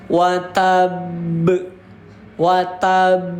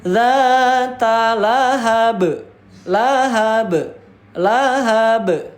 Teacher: Ini dinamakan dengan qalqalah akbar. Dan juga cara membacanya harus ditahan dulu baru dipantulkan